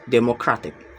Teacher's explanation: The stress is on the third to last syllables